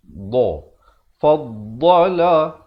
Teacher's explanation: Makhraj dad itu di tepi lidah. Mungkin sahabat-sahabat ya boleh lihat, okey, tepi lidah kita bawakan sama ada tepi kiri ataupun tepi kanan.